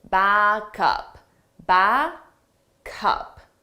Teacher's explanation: we take the sound from back, the last sound, and we transfer it to the next sound, up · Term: linking